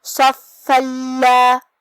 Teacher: صاد حروف التفخیم میں سے ہے تو ہم اسے بھاری آواز میں منہ پھلا کے پڑھیں گے. پھر حرف الفا پہ تشدید ہے، لہذا 2 حرف کے برابر ہم فا کو پڑھیں گے جو کہ اس پہ تنوین زبر ہے. · لام حروف الادغام بغیر غنہ میں سے ہے اور ادغام کا معنی ہے حرف کو حرف میں داخل کرنا، تو ہم یہ تنوین کو لام میں ملا کے بغیر غنہ سے لیکن تشدید کے ساتھ یہ حکم کو ادا کریں گے